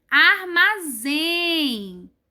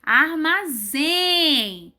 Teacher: O zen é falado mais forte, né? Com mais força do que o arma. Armazém. Então, nessas 3 palavras, as sílabas delas mais fortes estão em último lugar. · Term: sílaba mais forte